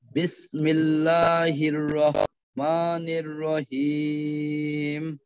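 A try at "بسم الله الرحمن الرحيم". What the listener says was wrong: জি, এইখানে হায়ের উচ্চারণে আরেকটু চাপ দিতে হবে, অন্যথায় কিন্তু এই গোল হার সাথে মিলে যাওয়ার একটা সম্ভাবনা। রহ মানির রহি, হিম, হা, হি, হু, এভাবে হবে হাটা।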